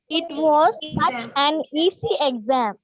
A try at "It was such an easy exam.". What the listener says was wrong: It was such such an ஒண்ணா சேர்த்து சொல்லுங்க. such an easy